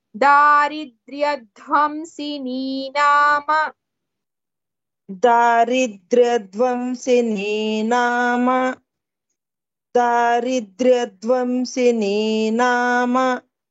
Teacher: In the word dhvamsini, dha is Mahaprana.